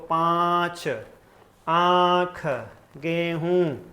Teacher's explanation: के पीछे से आवाज आएगी मतलब नाक भी उसकी सहायता करेगा मुंह के साथ साथ नाक की भी सहायता ली जाएगी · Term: अनुनासिक